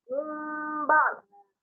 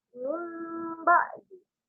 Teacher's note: memasukkan atau menukar bacaan huruf nun mati tersebut kepada huruf ba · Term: iklab